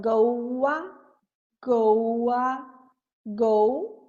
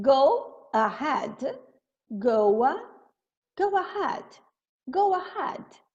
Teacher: Eu não consigo juntar isso, porque fica estranho. E aí eu vou colocar um som de W. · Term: intrusion